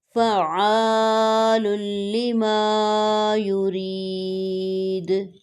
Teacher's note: جیسے ہی دال ساکن ہوئی اس پہ قلقلہ کیا جائے گا